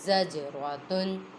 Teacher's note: جیم حروف قلقلہ میں سے ہے اور ساکن ہے، اس میں قلقلہ خوب ظاہر ہوگا